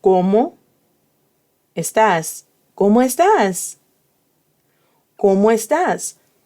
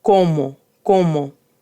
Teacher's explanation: the O in Spanish is cerrada, meaning it's closed.